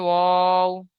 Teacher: দুই ঠোঁট না মিলিয়ে মাঝখান হতে উচ্চারিত হয়